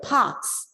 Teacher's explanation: The R is silent because a K follows R.